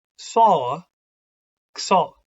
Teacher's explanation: A GS, the G often comes out a bit like a K at the start of those sounds.